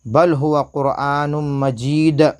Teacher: یہاں پر بھی قلقلہ ہوگا، حروف قلقلہ کے 5 حروف میں سے دال کے اوپر جزم ہے